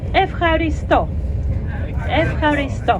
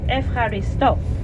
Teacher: The strong syllable is the last one